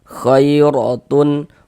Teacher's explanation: Khairatun, huruf ra memiliki harokat fathah, tanda baca fathah, maka ini huruf ra kita baca tebal, kita baca tabkhim, sehingga dengan menaikkan pangkal lidah kita ketika kita mengucapkannya